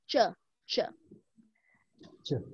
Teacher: so we say it from the hard pallet so you see we hit our tongue on the hard pallet and say ch ch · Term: CH sound